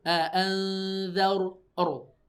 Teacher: ro yang sukun sebelumnya ada fathah atau dhammah, maka ini ro-nya tebal alias tafkhim. Jadi jangan a'anzar enggak gitu, tapi a'anzar ro, ya, tebal, tafkhim, ro-nya tebal, ya.